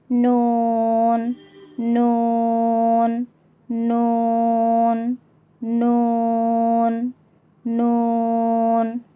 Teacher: नून ज़ुबान की नोक को ऊपर के दांतों के मसोड़ों को लगाने से नून निकलता है।